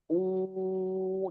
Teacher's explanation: Waw itu hurufnya di huruf yang makhrajnya ada di safatain ya, kedua bibir. Jadi u dan ditahan.